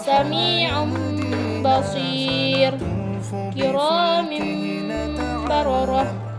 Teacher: huruf nun dan tanwin itu dibalik atau ditukar menjadi suara mim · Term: iqlab